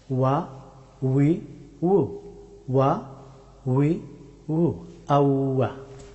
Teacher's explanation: ওয়াও হরফটি উচ্চারিত হয় দুই ঠোঁটকে রাউন্ড করে